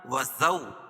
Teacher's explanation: وَزَوْجُكَ الْجَنَّةَ وَكُلَا مِنْهَا، وَزَوْ، واو ساکن سے پہلے زبر ہو تو واولین ہوتا ہے، اس کو نرم آواز کے ساتھ جلدی ادا کریں گے۔ وَزَوْجُكَ الْجَنَّةَ، نون مشدد۔